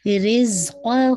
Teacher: رزقہ یہ آپ کی مد الصلاۃ الصغریٰ ہے، آپ کو 2 کاؤنٹ پڑھنا ہے اور زائی کا مخرج واضح ہو اور را کی کسرہ شارپ ہو انشاءاللہ.